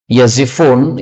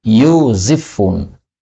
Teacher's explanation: Yazifun, ya-nya boleh didhammah menjadi yuzifun